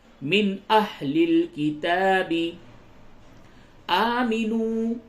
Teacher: نون ساکن کے بعد حمزہ ہے، اس جگہ پہ اظہار ہوگا